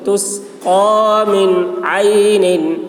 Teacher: نون میں اظہار ہوگا، نون کو جلد ادا کرنا ہے بلا غنہ کے. من عین، عین حلق سے ادا کریں گے.